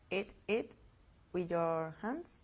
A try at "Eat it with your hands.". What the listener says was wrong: Okay, the pronunciation is different. Eat it. Eat it with your hands. Eat it with your hands. Do you hear the difference? Okay, comer, la E o la I es mucho más largo. Eat it. El pronombre es muy corto. It.